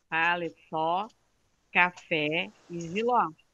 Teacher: todas elas são acentuadas ali na última. A última é a sílaba tônica.